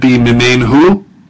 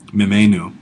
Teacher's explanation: So instead of mimenhu, you get mimenu. And instead of assimilating to the H, you get two N's there. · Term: Assimilation of the N